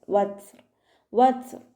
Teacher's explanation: ലാമ് കൽക്കലയുടെ ലെറ്റർ ഇല്ലാത്തത് കൊണ്ട് ഹാഫ് സുക്കൂന് കൊടുത്തിട്ട് ഉച്ചരിക്കുക. ത സുക്കൂനിലാവുമ്പോൾ കുറച്ച് എയർ പുറത്തോട്ട് പോണ സൗണ്ടിൽ വേണം ഉച്ചരിക്കാൻ.